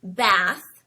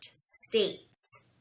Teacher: in contrast to a word like bath, which uses a short A sound, the word states uses a long A sound.